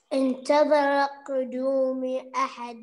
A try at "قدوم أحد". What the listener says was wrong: افتح الميم.